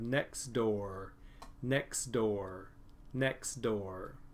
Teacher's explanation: we have two sounds here that are very similar next door so this T is going to disappear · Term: elysian